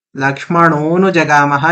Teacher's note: अनुजगामः में आ जो था वो लुप्त हो गया।